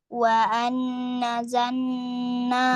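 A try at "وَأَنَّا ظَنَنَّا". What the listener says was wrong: Do. Bukan za. Do. Wa anna dhananna.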